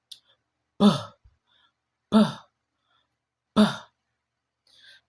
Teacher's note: you build up a little air pressure behind your lips, then you release them with a quick and sharp pop.